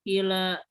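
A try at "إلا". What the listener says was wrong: Illa pakai tasydid.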